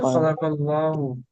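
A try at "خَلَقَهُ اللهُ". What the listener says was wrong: খালাকাহু, হু আছে, খালাকাহুল্লাহু,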